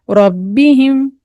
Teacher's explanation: रॉ यहाँ पर मोटा पढ़ना है